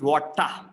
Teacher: if the r is coming in the end we replace it with a longer vowel sound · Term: schwa sound